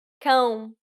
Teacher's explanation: you need to emphasize the nasality of the vowel so make sure you're pronouncing it through the nose this is a closed o sound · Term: nasal diphthongs